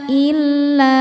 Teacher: mad thobii zohiri sebab ada alif didahului fathah cara bacanya panjang dua harakat illa bisultan Lamnya lam mutlak dibaca dengan jelas.